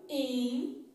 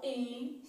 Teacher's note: O I não é pronunciado, in, assim, ó, é nasal, in